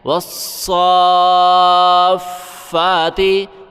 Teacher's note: فا کے اوپر کھڑا ہے، ایک الف کی مقدار فا کو کھینچنا ہے۔ والصافاتی، وقفاً، والصافات۔